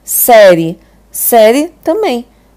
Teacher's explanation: Você não nasaliza nada essa palavra. Então, toda vez que você falar uma palavra assim totalmente livre, sem nasalizar ela vai ser um ditongo oral, né?